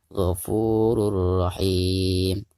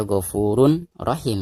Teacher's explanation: cara membaca tanwin yang di atas ro ini itu harus dimasukkan langsung ke huruf ro yang ada di depannya · Jadi bukan dibaca Ghafurun Rahim ya, tetapi diidghamkan atau dimasukkan ke huruf ro-nya seperti itu ya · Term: idgham bila gunah